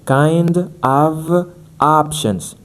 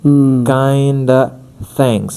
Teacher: when the other word after of starts with the consonant then the F sound or the V sound is going to dropped.